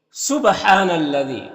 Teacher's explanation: تو دیکھیے، سبحان الذی، با حروف قلقلہ میں سے ہے اور با کے اوپر جزم ہے تو با میں قلقلہ ہوگا۔ ہاں میں کھڑا زبر ہے، یہ الف مدہ کی طرح ہوتا ہے تو اسے ایک الف کے برابر کھینچیں گے۔ یہاں پر الف میں کوئی حرکت نہیں ہے، اس کو نہیں پڑھنا ہے، دال کو باریک پڑھنا ہے۔